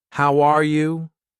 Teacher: For example, when I say, "How are you?" my voice goes up at the end. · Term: Intonation